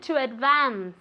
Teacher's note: Be careful with that V sound. You have to move your vocal cords